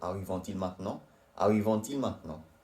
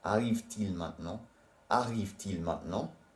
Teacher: You pronounce the T because il starts with a vowel.